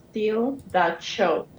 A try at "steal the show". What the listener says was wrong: And not cho, but show. So again, steal the show. And we're going to be a little softer with that SH, all right, for the SH. So instead of cho, it's show.